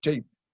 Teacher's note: La inicial L se palataliza en che. Esta palatalización se da en esta zona del Leonés o de las Turriones, que es toda esta zona del occidente de Asturias y concretamente en la zona del Pachuezo también, la nuestra y la de los sitios colindantes.